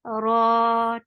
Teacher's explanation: Ra will be heavy because there is fatha at the top.